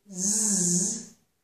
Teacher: they are both made with the tongue in the same position, but Z is voiced.